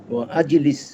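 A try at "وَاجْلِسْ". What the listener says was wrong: ওয়া আজলিস নয়, ওয়া ইজলিস অথবা অজলিস। ওয়াজলিস আপনি দুই ভাবে বলতে পারেন, একটু একটু নোট করেন।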